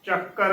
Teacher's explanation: ਅਧਕ ਦੀ ਪੂਰੀ ਆਵਾਜ਼ ਦੇਣੀ ਹੈ। ਕਈ ਸੰਗਤਾਂ ਅਧਕ ਨਹੀਂ ਲਗਾਉਂਦੀਆਂ